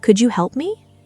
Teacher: The gentle rise softening the request, making it feel less like a command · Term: rising intonation